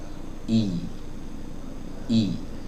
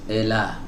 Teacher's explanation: Nah, para ulama mengatakan makhraj asal dari kasroh itu adalah ya. Ya, maka saat kita mengucapkan kasroh, makhraj asal kasroh itu dilibatkan sedikit, yaitu di tengah lidah. Tengah lidahnya diangkat sedikit, i. Nah, sempurna ya teman-teman ya.